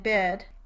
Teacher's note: ih is described as a high front unrounded lax vowel